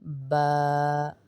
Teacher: होंठ बंद होंगे क्योंकि होंठों वाला लफ्ज है।